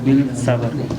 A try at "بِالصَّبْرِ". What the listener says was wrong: بال نہیں کہنا، بالصبر، بالصبر۔ بسم اللہ الرحمن الرحیم والعصر ان الانسان لفی خسر الا الذین آمنوا وعملوا الصالحات وتواصوا بالحق وتواصوا بالحق وتواصوا بالصبر۔ سورۃ العصر مکیہ، سورۃ العصر آج ہم نے پڑھنی ہے، تو یہ سورت مکی سورت ہے۔ مکی سورت کسے کہتے ہیں یوسف بھائی؟